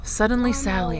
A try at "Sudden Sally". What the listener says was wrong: Not suddenly, just sudden.